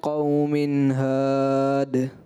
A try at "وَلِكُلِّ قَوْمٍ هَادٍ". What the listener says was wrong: کہیں ایک الف ہے تو کہیں آدھی الف ہے تو کہیں، تو اس طریقے سے جو ہے آپ کوشش کریں کہ غنہ کی مقداروں کو برقرار رکھیں.